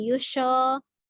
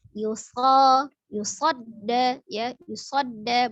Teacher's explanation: Jadi monyongnya hanya di domah ya yu.